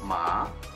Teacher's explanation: Jadi kita ngomongnya itu kayak kita bertanya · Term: intonasi yang kedua